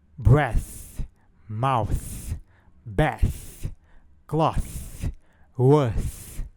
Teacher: Em sua pronúncia, não há vibração das cordas vocais, por isso a sua classificação como surdo. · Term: fonema fricativo dental surdo